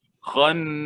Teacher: Bila kita tekan pada nun itu, transfer terus kepada hidung. Bila kita lepas, jangan dengung lagi. Jangan sengaukan lagi. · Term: wajib dengung